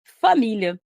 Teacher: É a sílaba mi, que é uma paroxítona. E é uma paroxítona terminada em A. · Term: sílaba tônica